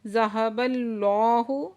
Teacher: ذہب اللہ، اس میں جلالہ سے پہلے زبر ہے تو اس میں جلالہ کو اوپر پڑھیں گے، اور لام مشدد ہے، سختی سے بھی پڑھیں گے، اور لام کے اوپر کھڑا زبر ہے، 2 حرکت کھینچ کر بھی پڑھیں گے